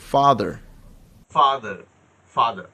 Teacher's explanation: আমেরিকানরা রটা উচ্চারণ, আরটা উচ্চারণ করবে, আর ব্রিটিশরা আরটা উচ্চারণ করবে না।